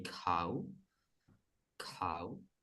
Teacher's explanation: Again, it's KH, it's an aspirated K, cow.